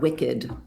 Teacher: the ed when it's pronounced, that's the schwa sound